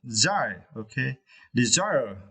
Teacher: for this word, you need to stretch the second syllable, desire. Okay, desire.